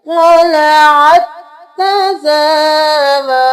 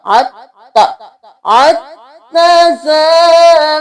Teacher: क़लअत तज़ावरू, यहाँ पे हम क़लअत तज़ावरू नहीं करेंगे, इस ता को हम स्किप कर देंगे, आइन को इस ता के साथ मिलाएंगे।